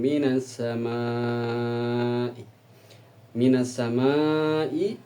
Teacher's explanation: Ada huruf mad tobi'i bertemu dengan hamzah dalam lingkup satu kalimat, disebutkan dengan hukum mad wajib muttasil, yang mana panjangnya 5 harokat.